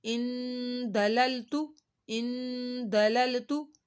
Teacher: ہم نے نون ساکن کے اوپر گنہ کیا اور آگے دللتو، دللتو، اس کو ہم نے کھینچا نہیں ہے، یہاں پہ کوئی حرف مدہ اور کھڑا مد نہیں ہے.